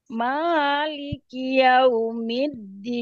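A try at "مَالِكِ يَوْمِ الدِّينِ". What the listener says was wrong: Nah, masih tinggi. Diturunkan. Ya, masih naik, diturunkan.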